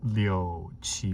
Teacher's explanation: it sounded like G instead of chi, like the aspiration just wasn't there